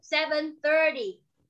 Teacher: con sẽ lên giọng một xíu tại trọng âm nó rơi vào 30 thì mình sẽ lên giọng một xíu.